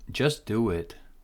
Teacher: So we're canceling T here. S is stronger. Do it. There is connection.